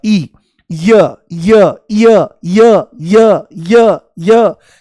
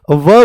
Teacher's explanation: तो पेपर में पूछेगा अर्धस्वर कौन से हैं, तो आपको बोलना पड़ेगा य और व जो हैं ये अर्धस्वर हैं, क्योंकि य में ई की ध्वनि और व में ऊ की ध्वनि हमको दिखाई और सुनाई देती है।